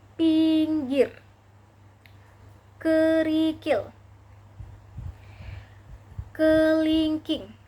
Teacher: Vokal I dengan tinggi bawah depan dengan kondisi mulut semi tertutup menghasilkan bunyi pinggir, kerikil, kelingking.